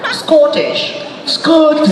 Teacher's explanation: The accent falls on the second syllable.